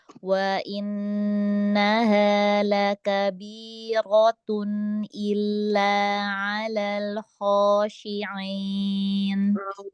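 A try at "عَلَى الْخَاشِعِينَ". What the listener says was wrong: Kasrohnya ain enggak? Alal khosyi'in.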